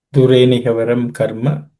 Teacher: Dureni havaram karma, there are no aspirated consonants.